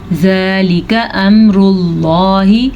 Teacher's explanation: لفظ اللہ کو پر پڑھنا ہے کیونکہ لفظ اللہ سے پہلے پیش ہے